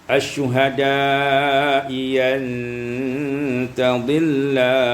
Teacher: Minasyuhada'i antadilla, Ibnu Katsir membaca bi ibdalil hamzati tsaniyah ya'an maftuha, dengan menukarkan hamzah yang kedua dengan ya yang maftuh